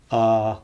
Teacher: and the central vowel is the most common vowel in English it represents a neutral tongue position so your tongue shouldn't really move up or down or forward or backward too much when you say this vowel